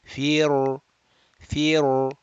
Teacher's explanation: we will read the ra rounded, although it is preceded by a kasra.